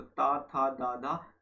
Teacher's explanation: इसमें जीवा का आगे का भाग का ऊपर का एरिया दांतों से स्पर्श करता है, तो ता, था, दा, धा, कभी आप बोल के देखिएगा, आपको पता चलेगा ये सब चीजें, ठीक है। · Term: स्पर्श व्यंजन